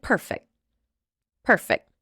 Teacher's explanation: I probably would drop the t a little bit